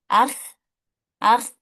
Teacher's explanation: huruf kho itu harus dialirkan, tidak boleh dipantulkan